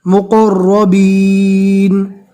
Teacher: اور رو کو اس لیے پور پڑھنا ہے کہ رو کے اوپر زبر ہے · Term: حروف مستعلیہ